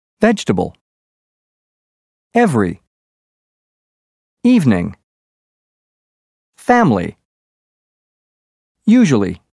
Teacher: the second E in vegetable, every, and evening are dropped, as is the I in family, and the second U in usually.